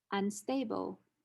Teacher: And so the alveolar nasal becomes the bilabial nasal. Unstable, the alveolar nasal didn't change because the next consonant is also an alveolar sound